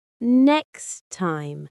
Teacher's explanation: The t sound from next drops. It is not there. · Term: dropping sounds